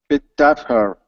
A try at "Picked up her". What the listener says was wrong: Okay, drop the H on her. Okay, we don't need to say it. It's picked up her. Picked up her. Okay, with words like her, his, him, has, we don't need to pronounce the H in front of those words. We can drop it. Okay, and we connect it to the word right before it.